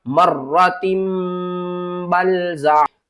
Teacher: جو تنوین کی آواز ہے نا اس کو ہم نے میم کی آواز میں کنورٹ کر دینا ہے ، تبدیل کر دینا ہے، اور پھر ہم کیا کریں گے، · ہمارے جو اوپر اور نیچے والے دو ہونٹ ہیں نا یہ آپس میں مل جائیں گے، آواز ناک کے بانسوں سے ادا آئے گی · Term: غنہ